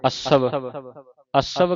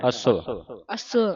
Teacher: ਇਸ ਨੂੰ ਅੱਧੇ ਵਾਵੇ ਨੂੰ ਉਚਾਰਨ ਕਰਨਾ ਤੇ ਪੋਲਾ ਪੜਨਾ ਅਸਵ ਅਸ ਹਾਂ ਪੋਲਾ ਪੋਲਾ ਉਚਾਰਨ ਕਰਨਾ ਇਹਨੂੰ ਬਸਤਰਾ ਮਿਥਿਆ ਰੰਗ